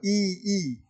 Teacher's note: तालू का सहयोग लेकर के जीवा ई का उच्चारण कर पाती है इसलिए हम इस ई को तालव्य कहते हैं और इसके बाद